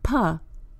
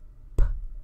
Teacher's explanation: p is unvoiced the lips are pressed together to release a puff of air